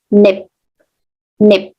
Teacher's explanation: Nip here, P, the phoneme P, this is unreleased, so it's pronounced nip. Nip. Because we close our mouth.